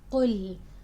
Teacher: make sure your qaf is heavy, your lam is light, and you're not adding a hamza after lam